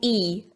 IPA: iː